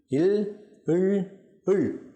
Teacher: காற்று நாக்கின் 2 பக்கங்களாலும் 2 மருங்குகளாலும் வெளியேற உச்சரிக்கப்படுபவை மருங்கொலிகள். இல் இல் இல் ஆகிய 3ம் காற்று நாக்கின் 2 பக்கங்களாலும் வெளியேற உச்சரிக்கப்படுவதால் மருங்கொலி எனப்படும்.